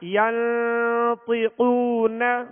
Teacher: طا اور قاف کو پر کرنا ہے، حروف مستعلیہ میں سے ہے